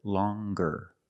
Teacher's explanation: With a nasal sound, plus the hard G.